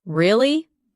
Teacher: when you ask a question like really, your voice goes up slightly at the end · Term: rising tone